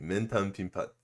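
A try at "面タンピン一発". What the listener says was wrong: Mentan Pin Ippatsu. No, Ippatsu is not usually short.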